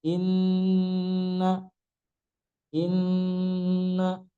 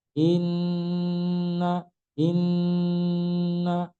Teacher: nun bertasdid ini ada gunnahnya